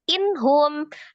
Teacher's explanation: nun sukun ketemu dengan ha juga sama izhar halqi ha juga keluar dari tenggorokan bagian bawah